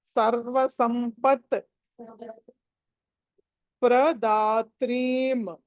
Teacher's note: సకల సురనుతాం సకల సురనుతాం సర్వ సంపత్ సర్వ సంపత్ ఆ స తర్వాత స కి ప కి మధ్యలో అనుస్వారం ఉంది అక్కడ మకారం పలకాలి